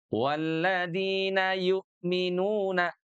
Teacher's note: Bunyi hamzahnya, nah di sini ada bunyi hamzah, itu ditekan, dijeda, karena dia punya sifat syiddah. Syiddah itu punya karakter jeda suara sesaat.